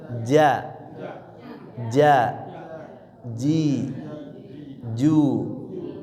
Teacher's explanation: kalau jim di mana di tengah tengah lidah ya dengan langit-langit atas ya.